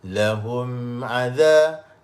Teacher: Bila kita bibir tu rapat lama, maka dengung tu jadi panjang.